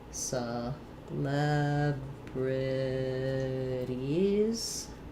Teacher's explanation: Final S has a Z sound here. · we have the leb syllable is stressed, meaning that my first syllable is going to have that reduced schwa vowel. Letter C says the s sound.